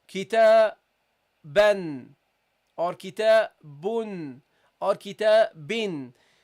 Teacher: So guys, in the Arabic language, when you pronounce words, at the end of the words, you will hear a non-vowel noon